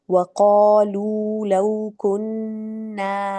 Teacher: اچھا وقالو پہ آپ نے قالو تو اچھا پڑھا، لیکن تھوڑا او کی طرف بھی لے جائیے، ٹھیک ہے. قالو اور لو پہ تھوڑا ٹائم لگائیں، مد اصلی ہے. اینڈ اگین لو کننا، کننا پہ جو ہے غنہ کرنا ہے تو تھوڑا وہاں پہ بھی ٹائم لگائیں گے اور مد اصلی کریں گے.